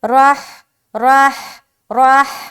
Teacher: را موٹا رہے گا کیونکہ اس کے اوپر زبر ہے